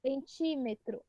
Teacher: O ti é o mais forte, a antepenúltima mais forte leva acento. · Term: proparoxítona